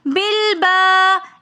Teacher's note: با کے ساتھ الف مدہ ہونے کی وجہ سے ہم نے بالبا ایک الف کی مقدار کھینچ کر پڑھا